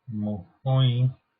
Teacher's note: And the R between vowels frequently drops out in Zuberoan. So these dialects are Bas Navar or Low Navar, Lapurdian, which is the coastal northern Basque dialect, and Zuberoan, which is the eastern northern Basque, northeastern Basque dialect. · In Zuberoan, it has nasal vowels.